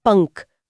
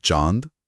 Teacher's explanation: अनुस्वार जो तीक्ष्ण नासिका ध्वनि है जैसे पंख। हवा पूरी तरह नाक से निकलती है और चंद्रबिंदु कोमल ध्वनि है जैसे चांद जहां हवा नाक और मुंह दोनों से निकलती है